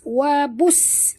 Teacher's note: bunyikan sofir pada huruf sin yang mati. Yang pertama huruf sin mati, huruf yang kedua berbaris atas.